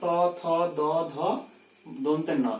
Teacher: এবার দন্ত বর্ণ ত, থ, দ, ধ, দন্তের ন, এইগুলো যখন আমরা উচ্চারণ করছি তখন, অর্থাৎ ত বর্ণ বর্গ যখন উচ্চারণ করছি তখন জিভটা দাঁতকে স্পর্শ করছে